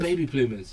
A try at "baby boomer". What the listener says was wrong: Not bloomer. Boomer. Yeah, stop on the L in, bro.